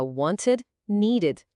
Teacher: se o verbo termina com som de t ou d como want ou need, o ed vira uma sílaba a mais com som de ed